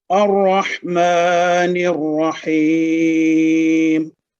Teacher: ہم نے الرحمن میں الف جو کہ لکھا ہوا ہے غیر متحرک، اس کو جب ہم نے الرحمن سے پڑھا تو اس الف کو ہم نے فتحہ کے ساتھ پڑھا، جبکہ الرحیم کو جبکہ ہم نے ملا کے پڑھا الرحمن کے ساتھ تو اس کے الف کو ہم نے نہیں پڑھا اور نون کو را مشدد کے ساتھ ملا کے پڑھا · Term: حمزۃ الوصل